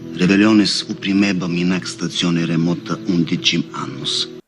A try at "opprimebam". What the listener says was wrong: Upprimeb. And then when he says upprimebam, his O is so close, it sounds like upprimebam instead of opprimebam.